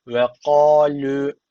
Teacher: V ince Başlıyor sonra ka kalın yani ince kalın geçişlerini dikkat edin Bunlar Tertil e önemli kuralları